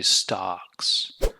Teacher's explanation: when you say stocks which sound is the loudest it's the vowel sound it's the ah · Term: Long vowel sound